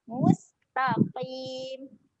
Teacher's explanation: Sin ketika mati dia ada keluar angin.